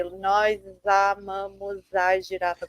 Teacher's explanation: you're pronouncing the S more as an S and less as a sh, whereas European Portuguese would always be sh